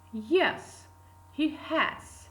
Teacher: Again, yes, agreement is pronounced with the falling tone. Then we indicate the short pause.